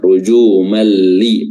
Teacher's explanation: sehingga huruf lamnya di sini bertasdid ya Lalu bila gunah ya tanpa disertai dengan gunah ya jadi enggak ditahan dan juga tidak ada suara hidung yang keluar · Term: idgham bila ghunah